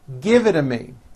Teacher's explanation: the only big change comes from the T's being pronounced as D's, and this happens because the T's fall between 2 vowel sounds. If you remember in American pronunciation, when T's fall between 2 vowels, they become voiced and are pronounced as D's.